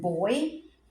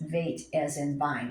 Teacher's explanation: The Beit has a dot in the middle, and it's a B as in boy, without the dot, which is called a dagesh. It is Veit as in vine. It's a softer sound.